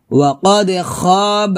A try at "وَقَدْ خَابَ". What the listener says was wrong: وَقَدْ قَدْ قَلْقَلَ এটা না এভাবে খাবা হবে না খ মোটা করে